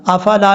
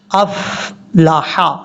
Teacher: یہاں پر دال میں قلقلہ کرنا ہے کیونکہ حروف قلقلہ میں سے ہے. حمزہ کو فا سے ملانا ہے لیکن فا میں قلقلہ نہیں کرنا، افلا نہیں پڑھنا، افلح.